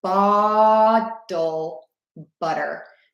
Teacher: I'm opening my mouth more for bottle, and then butter, it's more closed